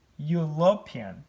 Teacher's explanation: Turahatangiza article a kuko twasanze ko a itangira ikoreshwa before a consonant cyangwa se consonant sound. Bivuga ngo iyi u yabaye iri kumvikana nka consonant sound kuko ntago ikiri u, ahubwo dusoma you. European nayo irumvira gusoundinga you, European.